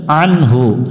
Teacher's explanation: আইন নুন জবর আন, হাফেশ হু, আন হু আন হু। আইন অক্ষর হলকের মধ্য থেকে একটু চেপে উচ্চারণ করতে হয়, আন হু। এখানে অনেকজনই ভুল উচ্চারণ করে আন হু, অর্থাৎ এটা হামজা উচ্চারণ করে।